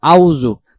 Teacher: আর যখন আমরা আউযু পড়বো তখন উচ্চারণ হবে এই আইন অক্ষরটা বাদ চলে যাবে।